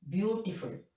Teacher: beautiful the first syllable is stressed